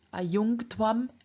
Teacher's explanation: In the second person, ayungtwam, we find internal sandhi again, namely in front of dh, which is a stop. We find the palatal at the end of the stem, ayunj, changing into a velar.